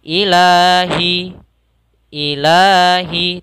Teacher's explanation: cara membacanya kita panjangkan dua harakat Ilahi Ilahi tidak ilah jangan terlalu panjang dalam membacanya Cukup dua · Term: Mad Thobi'i